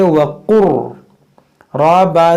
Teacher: अब यहाँ पर गौर करें, ये काफ को मोटा करेंगे, वक़ुर, इसको पढ़ेंगे वाव ज़बर वा, काफ लाम रा पेश कुर। अब यहाँ लाम की आवाज़ नहीं आएगी, ये लाम इस रा के अंदर दाखिल हो जाएगा, इसको पढ़ेंगे वक़ुर, रा बा ज़बर रब, वक़ुर रब, बा रा ज़ेर बिर, वक़ुर रब्बिर।